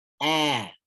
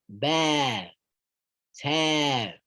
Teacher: The center part of the tongue is lying flat and the mouth is opening during pronunciation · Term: infitah